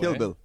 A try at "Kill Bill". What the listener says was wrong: You gotta put the emphasis on Bill, not kill.